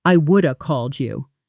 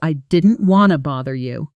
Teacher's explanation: Notice two blends happening at once here. would have collapsing into would and want to collapsing into wanna